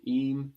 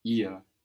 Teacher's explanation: Just like him and her in English. And we have that H there in both of these words, making the vowel longer